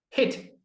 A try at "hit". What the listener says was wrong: Yeah, so it's a slightly different vowel sound too. So say for me heat. Right, which would be Heat, right? Heat. And then if we're talking about hitting like a baseball, we say hit. Hit.